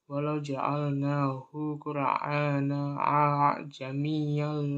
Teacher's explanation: hamzah pertama diucapkan atau dilafalkan secara sempurna dengan bunyi vokal 100% fathah. Kemudian, hamzah yang kedua dilafalkan sekitar 1/3% dengan disertai isyarat bibir.